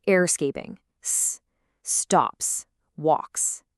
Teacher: if the sound before is unvoiced, like p, k, t, where your vocal cords don't vibrate, the S sounds like a sharp S